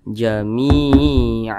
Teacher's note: apabila dia memiliki tanda baca kasrah maka huruf tersebut dibaca panjang Mi dibaca panjang Karena di sini ada Ya Sukun dan di belakangnya hurufnya berharakat kasrah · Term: Mad thii